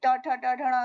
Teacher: मूर्धा से ऋ यानी कि ट ठ ट ढ ण की आवाज निकलती है